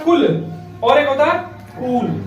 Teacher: छोटा उ जो है उसको सब बोलने में कम समय लग रहा है